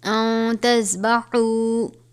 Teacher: نون ساکن کے بعد حروف اخفا میں سے تا آیا ہے تو یہاں پر اخفا کریں گے